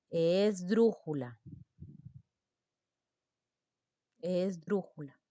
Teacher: la mayor fuerza de voz se ubica ya no en la última sílaba tampoco en la penúltima sílaba sino ahora esté en la antepenúltima sílaba la palabra será una palabra esdrújula es brújula es brújula correcto